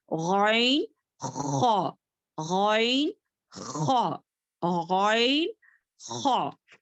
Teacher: اوپر کا حصہ، اوپر کا حصہ گلے کا اوپر کے حصے میں ادا ہونے والے 2 لیٹرز ہیں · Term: ادن الحلق